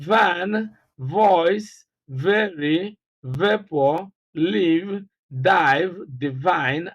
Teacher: the consonant sound V. It is described as a voiced labiodental fricative sound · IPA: /V/